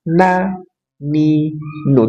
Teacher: ujung lidah dengan gusi dua gigi seri atas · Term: nun